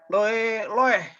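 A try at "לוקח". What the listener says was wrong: No. Ini kof kan? Lokeah.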